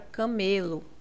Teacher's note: a penúltima é a mais forte por exemplo a palavra camelo aqui o me é a sílaba mais forte · Aqui o ME é a sílaba mais forte, então nós temos uma paroxítona